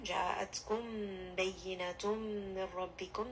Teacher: here we have a merging of the mim and the ba. So make sure that you are bringing this up into the nose, spending a bit of time. Ja'atkum bayyinatum min rabbikum.